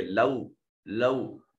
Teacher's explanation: तवल्लौ, लौ इसको लौ नहीं पढ़ेंगे, लौ लौ, थोड़ा सा अपनी आवाज को फतह की आवाज को कसरा की तरफ झुकाएंगे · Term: वाव लीन